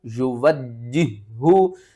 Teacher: یہاں پر آپ نے ایک تو ہا کو بھاری آواز کے ساتھ ادا کرنا ہے. ہا حروف حلقی میں سے ہے اور حلق کے سب سے نیچے والے حصے سے ادا ہوگا